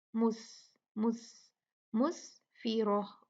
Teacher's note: اب یہ بھی دیکھتے ہیں، یہ پھر آ گیا تنوین آ گئی کسرتین، اس کے بعد میم آیا، میم بھی یرملون میں سے ہے تو ادغام کریں گے، یومئذ مسفرہ، سین جو ہے وہ ساکن ہے تو اس کی ہوا کی جو صفت ہے ہمس کی اس کو باہر نکالیں گے، مس مس مسفرہ، را ہیوی ہوگا کیونکہ اس پہ زبر ہے، فتحہ ہے